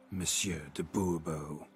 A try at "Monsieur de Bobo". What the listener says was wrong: The emphasis falls on the last syllable. Bobo?